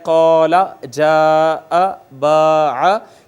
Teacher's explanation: الف المدیہ صغیرہ کہتے ہیں کھڑی زبر کو. جیسے الف المدہ کو اوپر کی طرف کھینچا جاتا ہے، قال جاء باع، اسی طرح کھڑی زبر کو بھی آپ نے دیکھا کہ اسی طرح کھینچا جاتا ہے اور اوپر کی طرف اتنا ہی کھینچا جاتا ہے جتنا کہ الف مدہ کو کھینچا جاتا ہے.